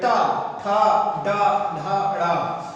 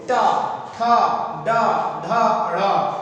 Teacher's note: जो जीभ होती है वो पलट के पीछे जाती है, यानी कि तालु के भी पीछे जाती है, तालु के पीछे का हिस्से को बोलते हैं मूर्धा। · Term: मूर्धन्य व्यंजन